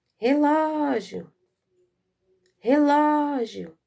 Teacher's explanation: A sílaba mais forte é a sílaba ló.